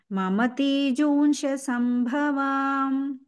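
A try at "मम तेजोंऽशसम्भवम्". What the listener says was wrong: సంభవాం కాదు సంభవం ఓకే వాకు దీర్ఘంజీ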